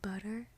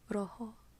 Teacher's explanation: it's like a little tap with your tongue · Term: tap sound